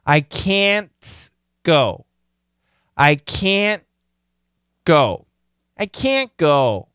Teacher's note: That T can disappear. It can stop. It can be clean.